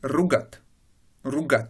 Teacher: Vous voyez que l'accent est passé sur la 2e syllabe.